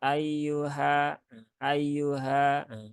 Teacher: ya ayyu ya ayyuha ayyuha di sini ada huruf ha ya huruf ha ya letaknya di tenggorokan ya tenggorokan bawah ya di sini bersama dengan huruf hamzah Maka jangan sampai dia diucapkan berpindah ke atas ya ayyuha ayyuha